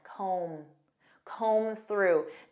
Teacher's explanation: notice that B is silent